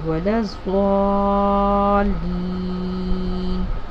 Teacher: اب یہاں پر ضاد کے اوپر جو مد پڑی ہوئی ہے اس کو 3 انگلیوں کے برابر کھینچتے ہیں ، یعنی اس کی آواز اس طرح نکلے گی ولا الضالین۔